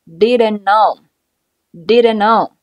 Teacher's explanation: 前一个词尾音的▁t▁是一个爆破音。后边跟着其他辅音的时候失去爆破不发声